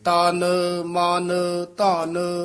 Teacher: ਮਮਾ ਤੇ ਨਨਾ ਹੈ ਹੀ ਅੱਧਾ ਨੱਕ ਚ ਬੋਲਦਾ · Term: ਨਾਸਕੀ